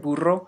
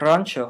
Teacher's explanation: the word burro has a trilled r you know this because it's spelled with a double r the